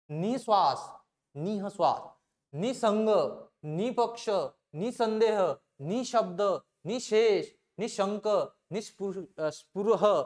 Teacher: ह ला थोडा हिसडा देऊन केला जातो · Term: विसर्ग